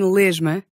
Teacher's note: The letter S can also sound like the voiced zh at the end of a syllable when the consonant afterwards is also voiced.